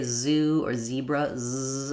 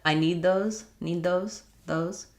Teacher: You can clearly hear the Z. Z's at the end are called weak Z's, and they sound a little bit like an S. So when I say, if I just said, I need those, those, you can hear there's a little bit of kind of S at the finish of what I'm saying, but it's not a strong S, not I need those.